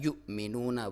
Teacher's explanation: حمزہ کے اوپر جزم ہو تو جھٹکے کے ساتھ